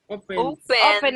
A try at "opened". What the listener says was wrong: Remember, we don't pronounce the E.